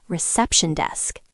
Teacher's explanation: In compound nouns, the main stress usually falls on the first word, so we stress reception desk.